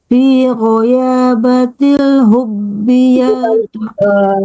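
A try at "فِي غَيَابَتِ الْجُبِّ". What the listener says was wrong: nanti jim itu ya.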